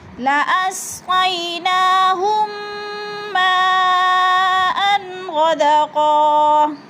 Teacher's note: زبر ما، حمزہ دو زبر ان، لا اسقیناہم ماءً، یعنی ادھر ادغام شفوی کریں گے، غنہ بھی کریں گے اور سختی سے جباؤ کے ساتھ پڑھیں گے · ادھر ادغام شفوی ہو رہا ہے کیونکہ میم ساکن کے بعد میم مشدد آ گئی ہے